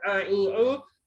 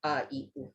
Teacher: Ain tu kena kecikkan halkum nak sebut a, i, u. Hamzah relax je